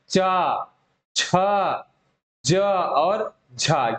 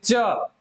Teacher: स्पर्श संघर्षी मतलब कि ऐसा व्यंजन जो स्पर्श वाला भी हो और संघर्ष करते हुए भी हवा निकले, दोनों हो, वही होगा स्पर्श संघर्षी।